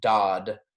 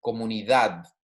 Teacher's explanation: right okay it's not like dad right or it's not dodd it's a very soft d almost like you're saying a t